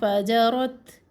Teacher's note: यहाँ पर भी अलिफ मद्दा नहीं है, अलिफ जो दरमियान में है ये साइलेंट है। फजरत ता में हम्स सांस बाहर आना चाहिए, अगर इसको हम सख्ती से पढ़ते हैं फजरत रत तो वो इसकी सिफ्त जो है वो ख़त्म हो जाती है, और अगर इसको हम मिला के पढ़ते हैं फजरत ऐसे भी नहीं पढ़ना।